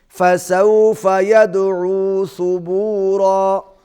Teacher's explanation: دال پر قلقلہ کریں گے